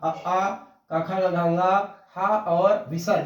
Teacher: कंठ यहाँ पर सबसे पहले जो अंदर हमारे मुंह के अंदर जो है कंठ है, तो कंठ में सबसे पहले ये वाले वर्ण है अ आ अकुह विसर्जनीय नाम कंठ। अ आ क ख ग घ हा और विसर्ग, इनका उच्चारण स्थान कंठ है और इसको हम कहेंगे कंठ।